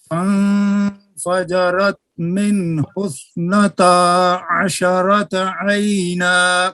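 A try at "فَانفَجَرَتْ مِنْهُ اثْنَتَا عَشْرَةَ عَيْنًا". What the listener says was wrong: عاشا نہیں حاجی صاحب، شین ساکن ہے.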